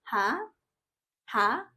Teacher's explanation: the second tone is para ka lang naga-ask ng question